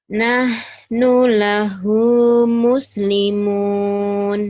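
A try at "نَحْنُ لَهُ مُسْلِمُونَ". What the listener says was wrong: Kalau ini kecepatan. Nah, nulahu muslimun. Tenang, tenang, tenang. Dinikmati.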